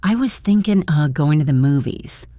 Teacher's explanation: The phrase thinking of reduces to thinkin' The G in thinking is dropped and of becomes Listen, I was thinking going to the movies. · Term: relaxed conversational version